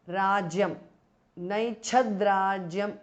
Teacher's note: The t changes to d because of sandhi.